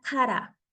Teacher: Otro sonido nuevo es el de la R. La R es siempre suave, como la R de la palabra kara. No hay sonido fuerte de la doble R en japonés. Entonces, simplemente es una R suave.